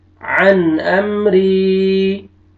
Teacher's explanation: नून साकिन के बाद हुरूफ हल्की में से हमजा आ रहा है, यहाँ पे आपने इज़हार करना है